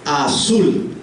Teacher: La sílaba tónica es sul, azul, es la que se pronuncia más fuerte.